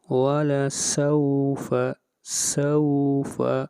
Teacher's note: سوف یہاں پر واو لین ہے، اس کو زیادہ کھینچ کر نہیں پڑھیں گے۔